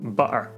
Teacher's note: if ta appears between vowels in the middle of a word, it can change into a glottal stop